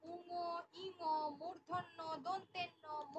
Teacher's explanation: উচ্চারণের সময় যে বর্ণগুলো উচ্চারণের সময় নাক দিয়ে বায়ুটা বেরোয়, মুখের ভেতর দিয়ে বায়ুটা না বেরিয়ে নাক দিয়ে বায়ুটা বেরোয়, সেই জন্য এটাকে আমরা বলে থাকি নাসিক্য বর্ণ।